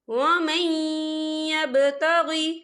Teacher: وَمَن يَبْتَغِ، یا دیکھیں وَمَن، یہاں نون ساکن ہے، نون ساکن کے بعد جو ہے یا آ رہا ہے، اور یا جو ہے حروف یرملون میں سے ہے، تو یہاں پر ادغام ہوگا۔ ہم تھوڑا سا غنّے کے ساتھ پڑھیں گے